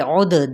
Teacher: عد دال پہ کلکلا ہوگا